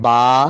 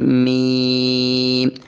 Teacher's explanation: बा पर अंदर वाले जो तरी है ये मिल रही है और मीम पर हल्की सी जो है वो खुश्की आपस में मिलेगी · فرق یہ ہے کہ با پر اندر والے جو تری ہے یہ مل رہی ہے، اور میم پر ہلکی سی جو ہے وہ خشکی آپس میں ملے گی